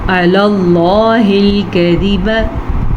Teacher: لفظ اللہ کو ہم نے پر پڑھا کیونکہ پیچھے عَلَى اللَّهِ لام پہ زبر ہے، اس لیے لفظ اللہ کو پر پڑھیں گے.